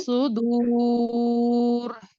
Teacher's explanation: را کو موٹا پڑھیے وقفاً